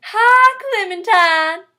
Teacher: The I sound is pronounced ah, without the E at the end of I, as in, hi Clementine.